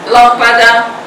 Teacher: circumflex como se fechasse o som da vogal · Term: acento circunflexo